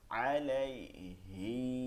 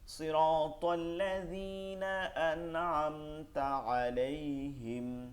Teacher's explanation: অন্য সব আয়াতের শেষে 3 আলিফ টান আছে, এখানে কোনো টান নাই